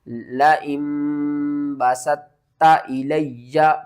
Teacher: طا کو آپ نے نہیں پڑھنا، یہاں پر پڑھنا ہے تا کو